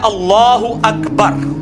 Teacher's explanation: لام کو پر پڑھنا ہے کیونکہ اللہ کا لام جو ہے وہ پر پڑھا جاتا ہے